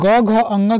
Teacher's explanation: प्रत्येक वर्ग का तीसरा चौथा पांचवा वर्ण सघोष होता है